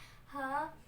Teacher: हलक के दरमियान वाले हिस्से से अदा होता है।